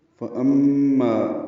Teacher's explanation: فَأَمَّا مَن ثَقُلَتْ مَوَازِينُهُ فَأَمَّا فا کو جلدی پڑھنا ہے، ام میں میم مشدد پہ غنہ ہے اور ما الف مدہ مدہ اس کے لیے 2 حرکات لمبا